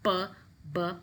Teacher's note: There's a complete closure and a sudden release. That's why they are called plosives or stops.